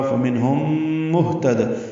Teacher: ہم میں میم ساکن کے بعد میم آنے کی وجہ سے ادغام ہے، ادغام شفوی ہے، غنہ ہوگا